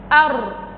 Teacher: الراء هي من حروف طرف اللسان، إذن تخرج الراء من طرف اللسان مع ما يحاذيه من الحنك الأعلى. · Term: حرف الراء